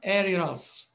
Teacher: in the word so here actually there's no r area of there's no r but if you listen to it you will hear the r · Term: extra sound